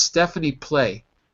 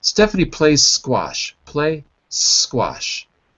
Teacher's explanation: We say it like this: Stephanie play, and we drop the z if we're speaking quickly